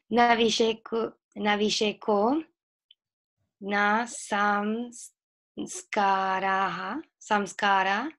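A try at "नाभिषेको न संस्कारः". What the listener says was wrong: You have to add the tune. Nabhisheko na samskaraha.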